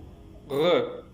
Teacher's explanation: il y a un resserrement du passage de l'air au niveau du voile du palais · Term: constructive vélaire